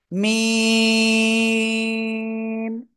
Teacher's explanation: এবার দুই ঠোঁটের শুকনো অংশ থেকে এই অক্ষরটা উচ্চারণ করব এবং চার লিপ টেনে পড়বো।